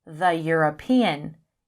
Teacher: European begins with an E, which is a vowel, but it begins with a consonant sound like y